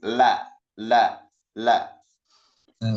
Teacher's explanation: suaranya dia berbelok ke samping kanan dan kiri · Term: inhiraf